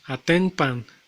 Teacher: al unirse aten con pan suena como atempan sobresale la m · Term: asimilación